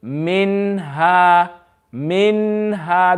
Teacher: the noon will be read clearly without any ghunna